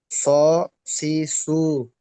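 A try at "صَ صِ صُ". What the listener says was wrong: জি স বললে এটা হবে না, একটু মোটা করতে হবে। স, সদ জবর স, সির, সিরাতাল্লাযীনা আনআমতা আলাইহিম, আমরা সূরা ফাতিহায় পড়ি।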